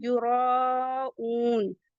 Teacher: واؤ مدہ ہے اسے بھی ٹو کاؤنٹ elongate کریں گے، نون پہ ایک سکون دیں گے